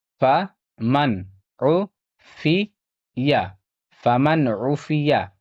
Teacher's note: یہاں نون ساکن کا اظہار ہوگا کیونکہ نون ساکن کے بعد یہاں عین ہے اور عین حروف حلقی میں سے ہے